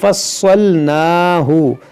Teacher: نون کو کھینچیں گے کیونکہ کھڑا زبر ہے، یہاں تفصی، یہ سی، بعض لوگ کیا پڑھتے ہیں تفصیلا، سین سے، تو سین نہیں ہے صاد ہے، تفصیلا۔